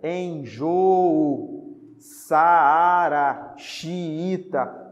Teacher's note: São palavras que têm duas vogais, só que elas ficam em sílabas separadas. Então, cada uma delas corresponde à vogal, mas em sílabas separadas, tá? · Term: hiato